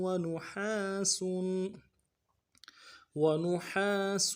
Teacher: واو کو نون سے ادا کرنا ہے، اگلے واو کو نون کو نون سے ادا کریں گے، ہا کو گہرائی سے ادا کریں گے، ہا کے ساتھ الف مدہ ایک الف مدہ بھی کھینچیں گے